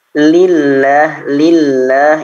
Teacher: Nah, yang membedakan adalah di pangkal lisannya. Pangkal lisan ketika tipis itu tidak terangkat.